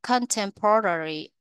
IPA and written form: kən'tempərəri (contemporary)